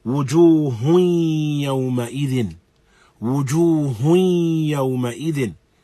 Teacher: Though it is incorporated into the waw, we still have the presence of gunna.